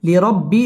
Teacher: রয়ের উপর জবর অথবা পেশ হইলে ওই রকে পুর অর্থাৎ মোটা করে পড়তে হয় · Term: র পুর হবে